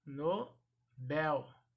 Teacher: esta palavra é oxítona portanto a sílaba tônica será a última · Esta palavra ela é oxítona, portanto, a sílaba tônica será a última, assim como a palavra com dor, dor sendo a última sílaba tônica. Bel vai ser a última sílaba, vai ser a sílaba tônica, portanto a última sendo pronunciada mais forte.